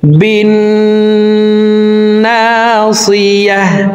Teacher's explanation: লানাসফাআম বিন্নাসিয়াহ, বিন এখানে ওয়াজিব গুন্নাহ, হরকতের বামে নুনের উপরে তাসদিদ আছে, এই কারণে এই বা তাসদিদওয়ালা নুনের সাথে 3 সেকেন্ড পরিমাণ গুন্নাহ করে ধরে রেখে পড়ব। দেখুন এইভাবে পড়তে হবে, বিন নাসিয়াহ, নাকের বাসি থেকে গুন্নাহ করে পড়ব।